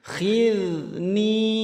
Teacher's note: huruf kha ngorok, kemudian huruf dzal lembut. Khidni, ini 2 harakat.